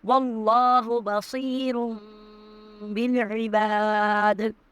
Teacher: وَاللَّهُ بَصِيرٌ بالعباد، واللہ میں اللہ کا نام جو ہے وہ پر پڑھا جائے گا، صاد کو پر پڑھیں گے، را کو بھی پر پڑھیں گے